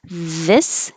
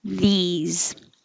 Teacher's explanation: this has the vowel i the tongue is a little lower if your tongue's too high it'll sound like these